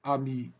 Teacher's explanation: le phonem a ami B ici le phonemme est antérieur c'est-à-dire la masse de la langue est porté vers l'avant de la bouche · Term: a antérieur